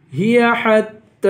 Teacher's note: تا کو ایک الف کی مقدار کھینچ کر پڑھیں گے